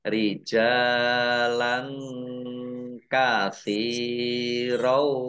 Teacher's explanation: fathah tanwin bertemu dengan huruf kaf, bacaan ikhfa, dibaca samar-samar.